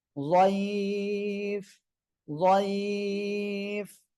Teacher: লিনের হরফের পরে আমরা এখানে ওয়াকফ করলেই আমরা তিন আলিফ টেনে পড়বো।